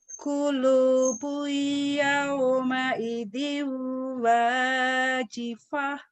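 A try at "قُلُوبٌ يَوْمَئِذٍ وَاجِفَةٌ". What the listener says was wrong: Sudah bagus, cuman mad-madnya ditambah dikit aja. Kulu. Mantap itu 1 alif. Tapi lagi belajar lagu, tambahin dikit biar manis. Kulu. Kalau baca biasa kan qulubu yawma idin wajifah.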